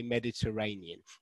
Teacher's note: it's actually this syllable here which i've underlined so we've got a six-syllable word with the stress on the fourth